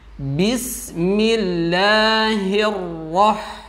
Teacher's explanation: Bis di situ sinnya lembut, kemudian diberikan sifat hamas, ada udara yang keluar lembut.